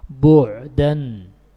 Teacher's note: Suaranya tidak mengalir deras, suara ya, bukan napas, tidak keluar secara lepas dan tidak juga tertahan secara sempurna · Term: tawassut